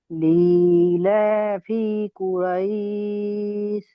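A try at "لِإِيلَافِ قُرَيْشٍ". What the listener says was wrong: শিন আছে, কিন্তু তিনটে নোক্তার শিন, বড় শিন, মোটা করে উচ্চারণ করতে হবে তালবেশ্বর মতো। লিইলাফি কুরাইশ, শেষে শিন উচ্চারণ করেন। আপনারা কায়দা বলেছেন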